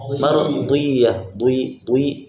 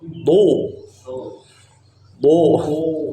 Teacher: bo bukan dengan bibir hubungannya, tapi dengan lidah.